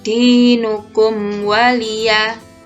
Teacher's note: Mim sukun berhadapan dengan huruf waw, maka sama ya, dibaca jelas tanpa dengung dan dinamakan izhar syafawi.